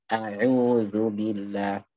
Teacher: Semuanya harus proporsional, yaitu yang tipis dibaca tipis, yang tebal dibaca tebal. Dalam kasus a'udzu, maka hamzahnya juga harus tipis.